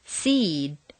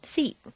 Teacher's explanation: a single syllable word will have a longer sound to it seed takes longer to say than seat